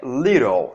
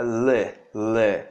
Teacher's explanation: Ele é um I que se aproxima de um som de E